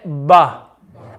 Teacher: the makharaj of ba is when the inner portion the inner part the wet part of the lips meet